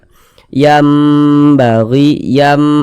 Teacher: didengungkan diunahkan jadi suaranya itu kita tahan kita panjangkan sejenak n yambagi yam ah kita panjangkan kita dengungkan yambaghi Laha gi